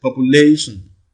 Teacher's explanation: you see that the primary stress falls on lay. That is the 3rd syllable from the left.